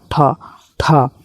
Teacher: ठ जो है यहां पर अघोष और महाप्राण है।